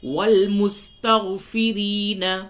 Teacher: را کو باریک کریں گے اور یا مدہ اسے کھینچیں گے